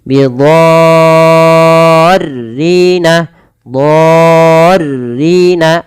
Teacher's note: Dha di sini wajib dipanjangkan 6 harokat, teman-teman. Bukan lagi 4 atau 5. Tapi 6 harokat. · Panjang dulu 6 harokat baru masukkan tasydid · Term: mad lazim